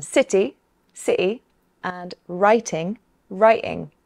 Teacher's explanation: we can also pronounce the letter T as a glottal stop, in many accents. Some people do this in between vowel sounds like in city, sɪʔɪ, and writing, raɪʔɪŋ. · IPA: /sɪʔɪ/